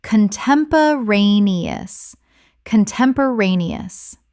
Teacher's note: Correct pronunciation, contem-po-ra-ne-ous. Six syllables with the stress on the fourth.